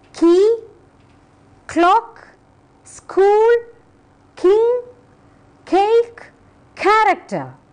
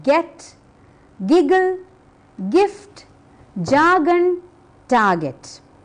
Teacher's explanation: K is voiceless, it comes from the mouth, and G comes from the throat.